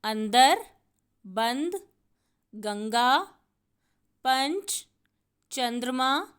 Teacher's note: यदि हम ठंड शब्द का वर्ण विच्छेद करेंगे तो आप देखेंगे अ के बाद ण की आवाज़ आ रही है और ये जो ण की आवाज़ है इसे हम अनुस्वार के रूप में प्रयोग करेंगे। अनुस्वार का उच्चारण करते समय अनुस्वार की ध्वनि नाक से निकलती है